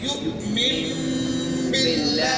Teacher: جب کمم کہیں گے تو اقلاب ہے, پھیریں گے تو اس میم کا غنہ ہوگا, اس کی آواز ناک میں جائے گی